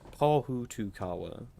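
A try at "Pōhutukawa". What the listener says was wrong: Yeah, Pohutukawa. And it's like Hutukawa. Well, yeah, because if it's got the macron, it's a longer sound, so it's Pohutukawa, yeah.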